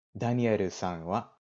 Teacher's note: You can just say their name and wa with a rising intonation.